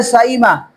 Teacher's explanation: حمزہ کو اپنے مخرج اور یا کے مخرج کے درمیان پڑھنا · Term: بین بین قریب